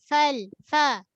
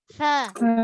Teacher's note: Perut bibir bawah, hujung gigi kacip atas. Fa, ada angin.